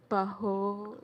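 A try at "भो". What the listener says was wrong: Baho nahi, bho. One sound. Bho.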